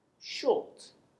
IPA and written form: ʆəʊ (short)